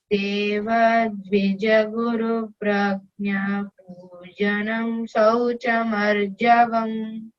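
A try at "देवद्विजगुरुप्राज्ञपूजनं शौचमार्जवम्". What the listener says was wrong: See, Deva is not, there is no A bar on top of A of Deva. Don't break Pragna Pujanam.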